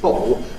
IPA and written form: ˈbɒʔo (bottle)